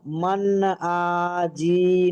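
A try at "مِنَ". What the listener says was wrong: টান দিচ্ছেন কেন? জি জি এখনো টান হবে ভাই? তাহলে টান দিচ্ছেন কেন ভাই? মান ঠিক ছিল তো। এখানে টান দেবেন কেন? এখানে কোনো টানের কায়দা রয়েছে? নেই।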